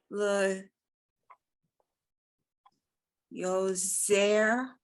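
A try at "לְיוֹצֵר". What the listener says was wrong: But just a reminder that that's a tzaddik, so it's leotzer. But that's fine if you're not doing the so like in pizza.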